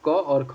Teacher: क और ख जो है यह कंठ ध्वनियाँ कहलाती हैं